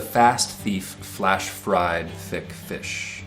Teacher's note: This has got F, which is a labiodental sound, lip and teeth, and TH sounds.